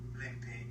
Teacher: The first thing we hear is the word limpy, but we hear the M is omitted, which is an elision, and we hear lippy.